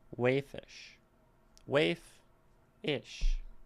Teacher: if we stick ish on the end of something, it doesn't want to be stressed. Waif is the main word, and we say it.